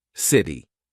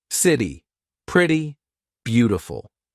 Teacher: This is when T sounds like a very quick D. Very big in American pronunciation. So when the letter T is in between two vowel sounds or dip thongs. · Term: flap T